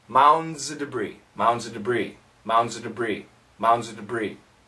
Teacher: We can cancel the F of, after of, if there's a consonant, we can cancel the F if we say it quickly.